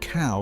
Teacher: The word cow starts as an ah and drifts into an oo. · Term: diphthongs